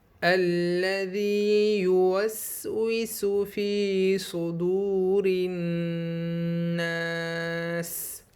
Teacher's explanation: واو ساکن سے پہلے پیش ہونے کی وجہ سے اس میں ہم تھوڑا سا کھینچیں گے